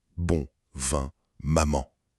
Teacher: Et enfin, le dernier secret, c'est la signature sonore du français, la nasalisation. C'est ce son si particulier où l'air passe aussi par le nez.